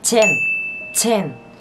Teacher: phải đọc chữ Chen này bật hơi một chút xíu sẽ ra là Chen.